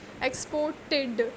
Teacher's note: so the stress is on the last syllable